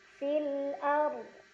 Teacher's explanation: Fil ard, ro sukun dibaca secara tafkhim karena huruf sebelumnya berbaris fathah. Jadi cara bacanya ro-nya ditebalkan dengan pangkal lidah yang terangkat.